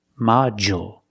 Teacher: we see that D makes the J sound like juice and jump